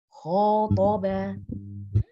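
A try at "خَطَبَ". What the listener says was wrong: khotobah, toba coba toba jangan dihentakan yuk khotoba khonya khotoba oke banyak pendek ya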